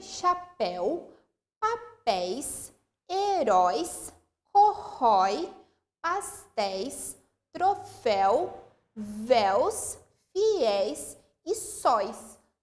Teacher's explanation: elas são oxítonas, a última sílaba é pronunciada com mais tonicidade